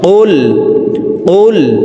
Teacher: আমরা অনেকে কুল পড়ে থাকি। কফের উচ্চারণ জিহ্বার গোড়া তার বরাবর উপরের তালুর সঙ্গে লাগাইয়া উচ্চারণ করে পড়তে হবে। তো এই পেশওয়ালা কফটি জজমওয়ালা লামকে একবার ধরবে।